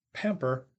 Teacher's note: the verb pamper has stress on the first syllable in English